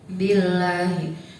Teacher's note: Di situ ada lam jalalah didahului huruf ba yang berharakat kasrah, maka cara bacanya tipis. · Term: lam jalalah tarkik